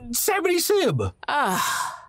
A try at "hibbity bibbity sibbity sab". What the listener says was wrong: Sibbity sab. You said it backwards.